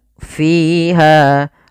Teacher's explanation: Fi di sini ada kasrah bertemu dengan Ya Sukun maka dinamakan dengan mad thi'i panjangnya dua harakat